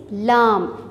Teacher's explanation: ये ज़बान के किनारों से अदा किया जाता है